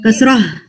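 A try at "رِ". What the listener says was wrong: इस साउंड में हा की फीलिंग आ रही है, वो हा नहीं आना है कसरा में। रॉह नहीं करना, रॉह रॉह, नीचे लाके कंप्लीट करें, रॉह रॉह।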